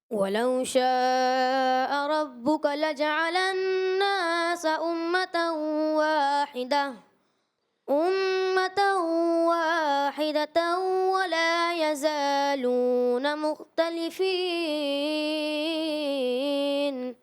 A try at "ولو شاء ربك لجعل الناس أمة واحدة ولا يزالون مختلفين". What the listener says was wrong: کہیں کہیں جو ہے نا آپ کا مد اصلی جو ہے تھوڑا تھوڑا طویل ہوتا ہے، اس سے جو آپ کی پڑھنے کی جو خوبصورتی ہے نا وہ کمزور پڑتی ہے. آپ کوشش کریں ایک ہی انداز ہو. وَلَوْ شَاءَ رَبُّكَ لَجَعَلَ النَّاسَ أُمَّةً وَاحِدَةً وَلَا يَزَالُونَ مُخْتَلِفِينَ.